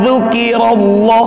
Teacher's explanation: lafal Allah dibaca tafkhim atau tebal. Dzukirallahu wajilat kul, awas tak berdesis, bukan dibaca huruf C.